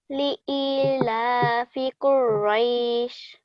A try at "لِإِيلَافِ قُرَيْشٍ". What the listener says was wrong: That's good. So I highlighted these two yas because you needed to hold them for a bit longer. They need to be 2 seconds.